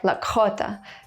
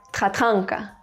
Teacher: uvular consonants, pronounced from the throat